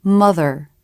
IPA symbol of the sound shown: ɹ